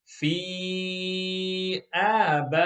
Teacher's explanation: In box number 5, there are two stretches, two muds, and one ghunna at the end on the noon shadda